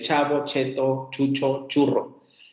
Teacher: nosotros tenemos el sonido africado ch, el de cheto, chavo, etc.